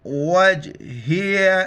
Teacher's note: وج کلکلہ کرنا ہے جھٹکا سے